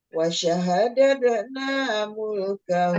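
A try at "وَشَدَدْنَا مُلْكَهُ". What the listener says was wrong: Wasyadatna, tidak ada pakai wasyaha. Wasyadatna.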